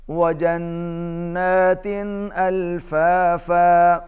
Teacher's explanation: تا پر تنوین ہے، اس کے بعد حروف اظہار میں سے حمزہ ہے، یہاں پر اظہار ہوگا